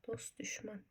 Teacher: Bax t-dan sonra samit gəlib. Necə olacaq? Dost düşmən. Deməli t düşəcək.